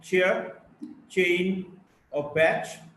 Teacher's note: ch, voiceless, post-alveolar affricate, as in the word chair, chain, or batch.